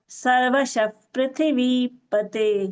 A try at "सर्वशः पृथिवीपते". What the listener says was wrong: Yes, it is Prithvi, but you are chanting Prathvi. It is pra, you are telling. It is Prithvi, Bhagini. It is earlier also you told Prathvi. It is Prithvi.